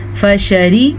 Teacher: فشربوا منه إلا قليلا، فشربوا فا زبر فا شین زبر شا، فشا را زیری را باریک ہے